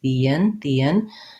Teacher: So I would write this as one word, the in, and because I'm linking from an E to an I have a little bit of a glide there. I don't have to say that in a really pronounced way, but that's how I link it, the in.